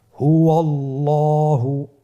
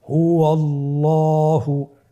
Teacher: আল্লাহ শব্দের দ্বিতীয় লামটিকে পোর করে পড়তে হবে।